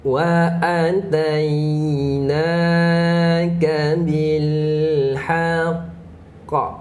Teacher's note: sebab kita berhenti pada huruf qalqalah akbar, jadi sabdu tu kita kena pegang. Okey, sabdu tu kita kena pegang.